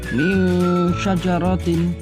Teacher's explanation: Di situ hukum bacaannya ikhfa dikarenakan nun sukun bertemu shin, maka cara membacanya suara nun sukun disamarkan